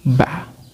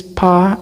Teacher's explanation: For example, when we produce pa and ba, the sound ba is called as voice sound, and then the sound pa is voiceless, because when we produce ba, there is a vibration ba, and when we produce pa, there is no vibration